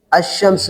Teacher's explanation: لام کو شین کر کے شین میں ادغام کر دیا